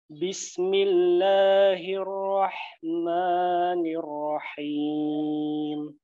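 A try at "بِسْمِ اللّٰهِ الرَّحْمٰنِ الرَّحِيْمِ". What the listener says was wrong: Karena temponya seperti itu. Bismillah. Nah, itu kepanjangan, Pak.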